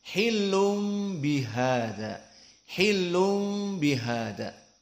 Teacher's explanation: Maka inilah dari makhraj cara takhrij yang mana Arab susah membaca makhraj nun bertemu dengan ba, karena makhraj nun atroful lisan bertemu dengan ba yang merupakan asyafah, maka di sini susah. Akhirnya diiklab dari makhraj nun jadi makhraj mim saja. Maka ditukar menjadi makhraj mim, menjadi bukan hilun tanwin tetapi masuk kepada masuk kepada mim, hilum.